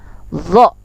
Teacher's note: Zo, nih zo ini yang sering zo, kita kan zo, padahal zo ini sama dengan sa dan za, tipis, ujung lidah dengan ujung gigi atas.